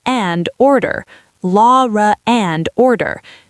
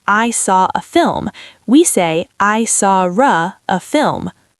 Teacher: We build a bridge with an invisible R.